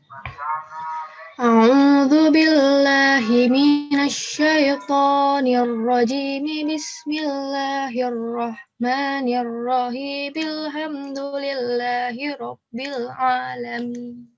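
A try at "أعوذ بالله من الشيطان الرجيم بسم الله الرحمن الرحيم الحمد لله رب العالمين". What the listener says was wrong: Sedikit temponya masih cepat ya.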